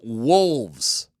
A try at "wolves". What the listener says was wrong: He didn't pronounce. He pronounced it with an F. Instead of wolves. getting a lot of WOOLS.